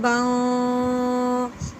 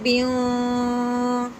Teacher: با دو زبر باؤں، با کے نیچے تنوین آ گئی، تنوین کے بعد آگے با حروف ہلکی میں سے نہیں ہے تو تنوین پہ غنّہ کریں گے